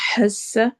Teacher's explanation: हस्स, ह रूफ हलकी में से, हलक के दरमियान से अदा होगा। सीन सीटी वाली आवाज है।